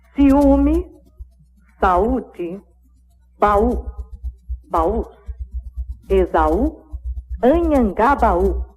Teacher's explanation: A letra U dessas palavras é a sílaba tônica pronunciada separada da vogal que a antecede.